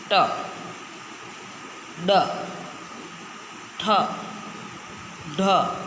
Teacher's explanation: આ શબ્દ બોલતી વખતે, આ અક્ષર બોલતી વખતે આપણી જીભનો અગ્રભાગ સહેજ વળે છે અને તાળવાને ચોંટતું હોય છે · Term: મૂર્ધન્ય